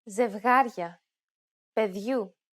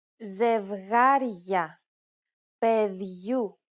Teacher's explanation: you will notice the addition of a sound very similar to the English Y in the word yard between the consonant and the opening diphthong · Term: forced palatization